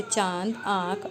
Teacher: अनुनासिक ध्वनियों का उच्चारण नाक व मुंह से होता है।